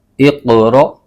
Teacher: میم حمزہ پیش مو، صاد زبر صا، مؤصا، دال زبر د، مؤصدہ، تا دو پیش تن، مؤصدۃ، حمزہ قاف زیر اق، را حمزہ زبر را، اقرا، اس میں قاف میں قلقلہ ہو رہا ہے اور حمزہ میں جھٹکا ہو رہا ہے، اقرا۔ اب ہم مزید مشق صوتی انداز سے کریں گے، یعنی ہجے نہیں کریں گے، رواں پڑھیں گے، اور حمزہ ساکنہ میں جھٹکا ہوگا اور حروف قلقلہ میں قلقلہ ہوگا، یعنی مخرج میں جنبش سی ہوگی جس کی وجہ سے آواز لوٹتی ہوئی نکلتی ہے۔